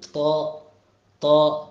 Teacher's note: അപ്പൊ അണ്ണാക്കിൽ മുരടിനെ, നാവിന്റെ മുരടിനെ ഒന്ന് ഉയർത്തണം, അപ്പോഴാണ് ഈ ത എന്നുള്ളത് കിട്ടുന്നത്. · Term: ത്വ